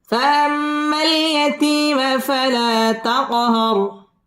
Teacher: তাকহার র পুর হবে এবং র এর মধ্যে ওয়াকফ করতে হবে